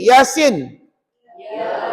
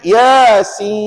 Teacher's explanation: bila sebut Sin hujung tu jangan tutup bibir kadang-kadang ada saya perhatikan Yasim tutup bibir pula kenapa tutup bibir